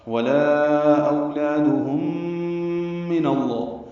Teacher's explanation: ولا اولادہم من اللہ, ادغام شفوی ہے, میم کو میم سے ملانا ہے, ادغام شفوی ہے, غنہ ہے